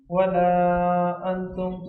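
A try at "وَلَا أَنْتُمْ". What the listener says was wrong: ایک تو یہاں انتم غنہ ہے، انتم، ٹھیک ہے.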